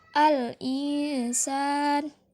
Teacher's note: mad asli atau mad tabi'i, karena fathah bertemu dengan alif, maka dipanjangkan dengan 2 harokat.